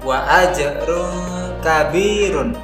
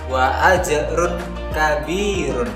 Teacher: Dalam lafaz tersebut terdapat huruf ro berharokat dhammatain bertemu dengan huruf kaf, maka bunyi tanwin dibaca dengan samar dan mendengung mendekati huruf kaf, wa ajrun kabirun, dan tidak boleh dibaca dengan jelas wa ajrun kabirun. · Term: ikhfa